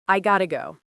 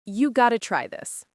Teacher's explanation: In fast speech, the T sound almost disappears and it becomes this smooth guh sound